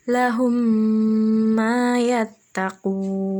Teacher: dibaca dengan mendengung, makhraj huruf hijaiyah mimnya jelas dan mengalun, kurang lebih sekitar 2-3 harokat atau 1 alif hingga 1,5 alif. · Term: idgham mimi